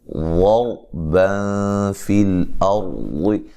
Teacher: واو مدہ ہے، نون کو لمبا نہیں کرنا، ضربا فی الارض، یہاں واد کو موٹا ادا کرنا ہے، را کو بھی موٹا ادا کرنا ہے